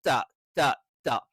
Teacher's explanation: നാവിന്റെ അറ്റം അത് മുൻപല്ലിന്റെ മോണയിൽ ചേർത്ത് വെച്ചിട്ടാണ്